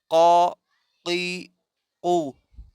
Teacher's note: اقصی لسان جب ٹچ کرے گا تالو کو، نرم تالو کو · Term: قوف